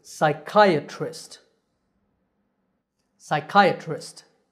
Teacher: And the word ends with trist. The stress is on the second syllable, so this word is psychiatrist.